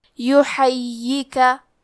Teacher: یا پہ تشدید ہے تو ہمیں 2 حرف کے برابر یا کو پڑھنا ہے، اور کیونکہ تشدید زبر کا ہے تو ہم زبر کو ظاہر کریں گے۔